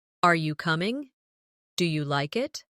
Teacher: Another important element is intonation when asking questions. In English, our voice usually rises at the end of a yes or no question.